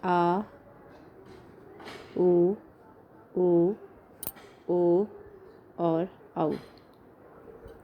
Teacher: पश्च मतलब पीछे, जिसमें जीभ का पीछे वाला हिस्सा आपका क्रियाशील रहता है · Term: पश्च स्वर